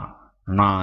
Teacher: நாவின் நுனி மேல்வாய் அண்ணத்தின் நடுப்பகுதியை தொடுவதால் நகரம் பிறக்கிறது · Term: மூன்று சுழி நகரம்